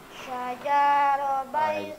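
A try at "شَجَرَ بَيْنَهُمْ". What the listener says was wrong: Jimnya pendek.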